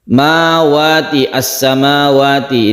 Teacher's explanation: al-nya tidak dibaca langsung kita idgham idgham artinya masuk masuk ke huruf Sin sehingga al-nya tidak terbaca karena sudah idgham ya Ini namanya al-syamsiah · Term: Idgham Syamsiah, idgham syamsiyah